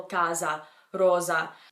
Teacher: a single s in Italian is actually referring to a Z sound okay so for example casa rosa 1s mixes Z sound sometimes · Now you'll notice that I didn't say rossa and rossa or rosa and rosa, okay? Because a single S in Italian is actually referring to a Z sound